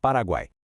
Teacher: Já o tritongo é quando a gente tem três colegas de quarto dividindo rigorosamente o mesmo espaço silábico, uma sequência inquebrável de semivogal, vogal e outra semivogal.